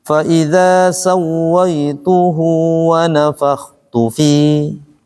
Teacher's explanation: tu-nya jangan panjang-panjang, yang panjang fi-nya